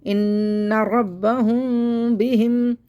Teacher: यहाँ पे बाप बाप हम झिरी बनाएंगे, मीम साकिन के बाद बा आएगा, तो यहाँ पे हम झिरी बना के पढ़ेंगे क्योंकि यहाँ पे इख्फा शफी हो रहा है, तो पढ़ेंगे इन्ना रब्बहुम बिहिम यौमइज़िल, यहाँ पे इज़हार शफ़ी हो रहा है, यहाँ पे गुन्ना, हिम गुन्ना नहीं करना है, इज़हार शफ़ी हो रहा है, यहाँ पे हम इज़हार करके पढ़ देंगे, ज़ाहिर करके पढ़ेंगे बस मीम को।